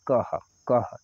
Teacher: ह का आपको आवाज निकल रही है अंत में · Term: विसर्ग